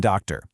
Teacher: the unstressed syllable, our jaw just completely relaxes. The vowel loses all of its energy and becomes incredibly lazy. It just kind of collapses into this weak, apathetic uh sound, which is represented by that upside down e symbol you see there. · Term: lazy schwa